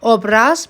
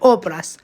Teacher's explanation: Obraz sözündə misal üçün vurğu son hecaya yox, ilk hecaya düşür.